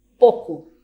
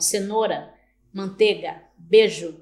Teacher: redução de um ditongo em uma vogal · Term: monotongação